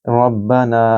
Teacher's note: समिअल्लाहु लिमन हमिदह रब्बना लकल हम्द, यहाँ रॉ को पुर पढ़ेंगे क्योंकि उसके ऊपर ज़बर है। रब्बना नून को लंबा करें क्योंकि आगे अलिफ मद है